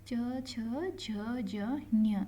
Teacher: ತಾಲ ವ್ಯಾಕ್ಷರಗಳು ಅಂದ್ರೆ ಅಂಗುಳದ ಮುಂಭಾಗದಿಂದ ನಾವು ಇದನ್ನ ಏನ್ ಮಾಡ್ತೀವಿ ಅಂದ್ರೆ ಪ್ರೊನೌನ್ಸ್ ಮಾಡ್ತೀವಿ ಸೋ ಇದಕ್ಕೆ ನಾವು ಏನಂತ ಅಂತ ಹೇಳ್ತೀವಿ ಅಂದ್ರೆ ತಾಲ ವ್ಯಾಕ್ಷರಗಳು ಅಂತ ಹೇಳ್ತೀವಿ